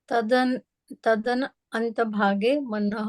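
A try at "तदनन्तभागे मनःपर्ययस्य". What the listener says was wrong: ये इसमें क्या है, ये तदनंत भागे एक साथ पढ़ेंगे ना तो क्लियर रहेगा।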